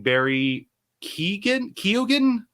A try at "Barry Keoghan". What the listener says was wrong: Oh, Barry Cogan. Yeah, I think you don't pronounce the E, if I remember correctly.